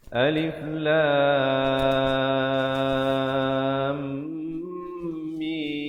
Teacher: Itu bacaan yang salah. Bacaan yang betul mestilah lam ke mim itu dia bersambung. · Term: idgham